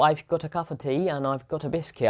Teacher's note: of preposition becomes schwa, and also article becomes schwa